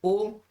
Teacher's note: ओ कहने का मतलब है कंठ और ओष्ठ की सहायता से बोला जाता है